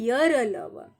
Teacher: स्वर और व्यंजन के बीच का आपसी संबंध होता है और ये उच्चारण करते समय मुख के अंग के परस्पर एक दूसरे का पूरी तरह से स्पर्श नहीं कर पाते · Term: अंतस्थ व्यंजन